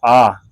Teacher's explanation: विवृत स्वर इनके उच्चारण में मुख सबसे अधिक खुलता है